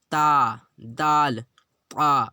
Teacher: سیرہ زبان اوپر کی سامنے والے دانتوں کی جڑ سے مل کر تا، دال، طا ادا ہوتے ہیں۔